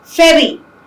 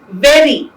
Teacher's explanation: r can be defined as a flap or a tap when it is produced with a single tap of the tongue